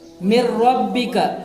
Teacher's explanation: دوسری مثال دیکھیے، من ربک، نون ساکن کے بعد حروف ادغام میں سے را آیا ہے، اس لیے نون ساکن کو را سے ملا کر بغیر غنہ کے پڑھیں گے۔ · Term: ادغام بلا غنہ